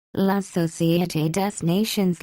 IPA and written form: la sɔsjete de nɑsjɔ̃ (La Société des Nations)